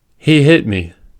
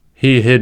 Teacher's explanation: the length is shorter before a voiceless consonant and longer before voiced sound. This phenomenon, in linguistics, is called Prefortis clipping.